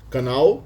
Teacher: the L itself is pronounced more like a w